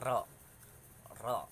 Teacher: taqrir at-taqrir itu artinya satu kali getaran halus di ujung lidah